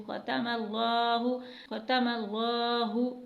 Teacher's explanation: میم کے اوپر زبر ہے اس لیے لام کو موٹا پڑھیں گے۔